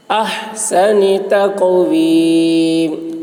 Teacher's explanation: ہا کی آواز حلق سے